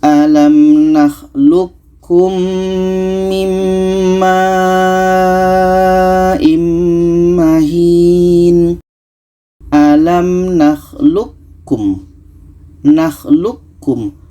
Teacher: qo ini kita masukkan ke ka Q ini tidak jadi qalqalahnya · Ada qa bertemu ka, maka qa ini yang asalnya qalqalah tidak jadi, kita masukkan ke ka, kita idghamkan ke ka. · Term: ID mutaqaribain, idgham mutaqaribain